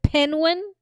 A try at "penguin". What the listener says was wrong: It's definitely not penguin because you're leaving out the whole middle part of the word there.